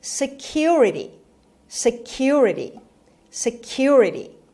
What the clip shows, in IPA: sɪˈkjʊrəti